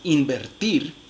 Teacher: Entonces miren, por ejemplo, cómo en la palabra invertir, la nasal que es alveolar, en realidad se realiza como una nasal bilabial, debido a que la siguiente consonante es una consonante bilabial